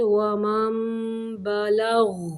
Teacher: غین کو کلکلا نہیں کرنا اور غین کو موٹا پڑھنا ہے ساکن کرتے ہوئے